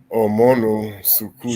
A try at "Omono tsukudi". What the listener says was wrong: Tsukudi. So tsukudi, we omit one S and put the T on that place. Tsukudi. Omono tsukudi. Omono tsukudi.